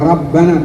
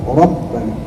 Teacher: Pada kata Rabbana diawali dengan huruf Ra yang notabene berharokat fathah, maka dihukumi dengan tafkhim atau mufakham. Artinya dibaca tebal, ya. Tidak baca Rabbana, tidak, jangan ra, Rabbana.